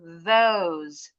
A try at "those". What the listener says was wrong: Masih ada kedengaran D. Those. Those. Ujung lidah keluar pasti bunyinya bukan D.